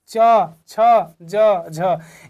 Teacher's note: जब शुरुआत का जो ध्वनि निकल रहा है वह स्पर्श कर रहा है। बाद का जो अंतिम हो रहा है उसमें घर्षण हो रहा है।